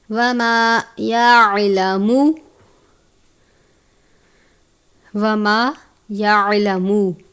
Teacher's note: وما یعلم، وما یعلم، الف سے پہلے زبر ہے الف مدہ، عین ہے، عین کو باریک پڑھتے ہیں، الف کی طرح نہیں پڑھنا،